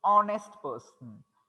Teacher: no, h is silent here.